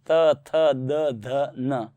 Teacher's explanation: त थ द ध न अर्थात दंत्य है